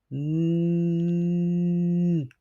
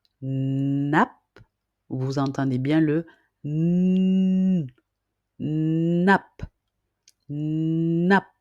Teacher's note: Vous pouvez commencer par placer le bout de votre langue contre la crête qui est située juste derrière vos dents supérieur avant. Ensuite, vous allez expirer par le nez tout en gardant la bouche ouverte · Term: son N